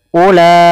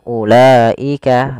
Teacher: tidak boleh dikurangi 2 harokat misalnya ulaika, nah, kurang, maka dia salah, harusnya 4 harokat. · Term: mad wajib muttasil